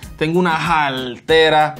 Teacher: And this R in Puerto Rico becomes an L sound.